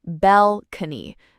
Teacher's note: This word has three parts and the stress is on the first part. Balcony, not balcony.